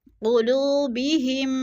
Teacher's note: میم ساکن کے بعد میم مشدد ہے تو ادھر ادغام ہو رہا ہے، سختی سے جمع کر پڑھیں گے۔